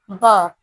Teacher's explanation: एक ओष्ठ्य, अप्राणित, सघोष अक्षर का उदाहरण है